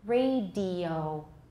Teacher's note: the second and third vowels in radio for example are comparatively long